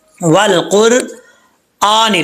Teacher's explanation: حمزہ کے اوپر کھڑا زبر ہے، سٹینڈ زبر، اس کو 1 الف کی مقدار لمبا کریں گے